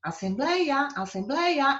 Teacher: É uma paroxítona com ditongo aberto.